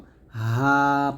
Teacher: হা টা আমরা হলকের শুরু থেকে উচ্চারণ করব হা পাতলা করে এটা